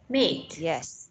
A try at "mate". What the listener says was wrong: Yes.